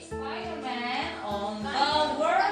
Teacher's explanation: L 소리를 조금 더 유지해 주셔야 돼요. 오케이, 그 다음에 여기도 로번 박수 시작.